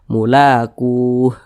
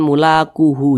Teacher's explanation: atau berhenti tepat di huruf ha nah tepat di huruf h huruf Ha kan tidak dibaca panjang Makanya kita sukunkan atau kita matikan sehingga dibaca mulaquuh begitu jangan mulaquuhu jangan tapi dibaca mulaqu begitu